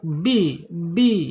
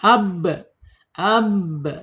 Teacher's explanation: Asyafatain, 2 bibir terkatup bi ya